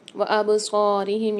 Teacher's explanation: صاد کو موٹا بھی پڑھا جائے گا اور کھینچ کے بھی پڑھا جائے گا 1 الف مدار